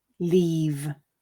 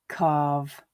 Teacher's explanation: you'll notice that the vowel sound is slightly elongated before the voiced sound